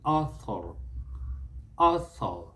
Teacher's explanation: Americans, when they pronounce their words, they will try to bring out the R.